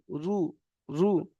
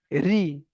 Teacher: রু, পাতলা করে আওয়াজটা পাতলা করে মুখটাকে গোল করে পড়তে হবে। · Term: পুরের উচ্চারণ